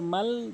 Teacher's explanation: মিমলাম জবর মাল ধরে পড়েছি, টান দেই নাই। জজমের নিয়ম কখনো টান হয় না, উপরেই মাথা বাঁকা চিহ্নটির নাম হচ্ছে জজম।